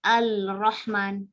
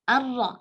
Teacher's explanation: Kalau baca Bismillahirrahmanirrahim atau Alhamdulillahirrabbilalamin, ya Ar-Rahman, nggak Al-Ra, nggak, tapi Ar-Ra. Ar-Ra, langsung terdengar suara huruf Ra yang bertasydid, tidak ada suara huruf lam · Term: idgham